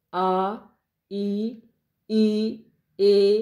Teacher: गोलाई रहित आ ई ए इन्हां दे विच बुल गोल नहीं होए